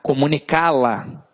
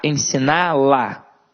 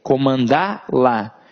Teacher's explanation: Na hora que eu for formar comandá-la, ensiná-la, comunicá-la, eu vou formar palavras que funcionarão como oxítonas. Então, elas terão a sílaba tônica na última sílaba